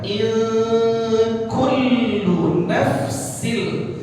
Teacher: nun mati bertemu dengan huruf kaf. Berarti ada ikhfa di situ